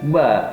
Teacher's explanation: ba mempunyai makharijul huruf pada kedua bibir yang disentuhkan